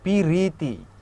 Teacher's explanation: ই স্বরধ্বনিটা চলে আসতেছে আমার উচ্চারণের কারণে। তো যখন মাঝখানে এরকম স্বরধ্বনি আসবে সেটাকে আমরা বলবো মধ্য স্বরাগম, বিপ্রকর্ষ বা স্বরভক্তি, ঠিক আছে।